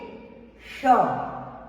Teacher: जो जीभ है आपके दातो के बीच में जीभ होती है ये जो जीभ है आपकी ऊपर तालू को टच करेगी जो आपके दांतो के बाद मुलायम हिसा ऊपर है उसको टच करेगी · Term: तालव्य